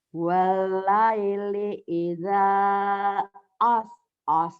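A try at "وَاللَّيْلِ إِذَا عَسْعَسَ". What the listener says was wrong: enak aja as. Itu kan nain, Bu. Nain, Ibu. Iya, kalau Ibu kan walaili idza as pakai a.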